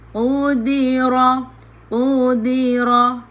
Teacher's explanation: Qu maintain tebal, di nipis.